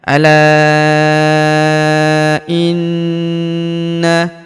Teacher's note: huruf la kita panjangkan empat atau lima harakat karena di depan huruf la terdapat alif yang di atasnya terdapat tanda garis bacaan panjang empat atau lima harakat yang ini ya.